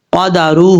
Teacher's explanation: ہا کے اوپر الٹا پیش ہے، ایک الف کی مقدار اس کو لمبا کر کے پڑھیں گے